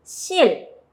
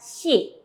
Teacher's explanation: la S más la I no se pronuncia sí o sí, sino que se pronuncia más o menos como el inglés, como que como entra una H entre la S y la I